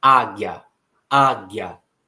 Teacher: E aí, quando nós pronunciamos a palavra águia, nós percebemos que o A fica bem mais pronunciado do que o I, que é bem rapidinho. É uma transição muito breve entre o som de G e o som de A. · O I é uma semivogal, o A é uma vogal. E quando nós partimos da semivogal para a vogal, nós temos ali um ditongo crescente, ok?